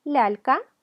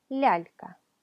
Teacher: la ya palataliza, suaviza la consonante que le precede